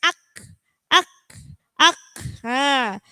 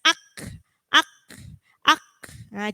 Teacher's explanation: Hati-hati kalau membunyikan kaf sukun harus ditekan dulu kemudian dikeluarkan hamesnya. Ak, ak. Jadi cara membunyikan kaf ketika disukun itu ditekan dulu, baru dibunyikan hamesnya ak, ak, ak.